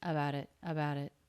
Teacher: a little bit of a release of a t here an escape of air